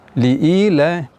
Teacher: pada kata-kata ila itu terdapat mad tabi'i, kita baca dengan sedikit panjang, yaitu 2 harakat, tidak lebih. Li'ila, ya, dibaca 2 harakat, jangan dibaca terlalu panjang.